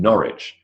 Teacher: The W in Norwich, not pronounced at all.